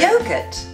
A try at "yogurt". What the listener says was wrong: No, there's more R. But like a robot. This is just a general distinction.